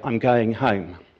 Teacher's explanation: Estuarians might say, I'm going home, with what we call a front vowel